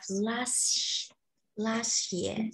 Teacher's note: the T sound in the word last is also disappeared.